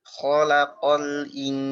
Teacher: Kho pakai kho, terus lam tipis, qaf tebal, pakai qaf. Jangan khalaqo.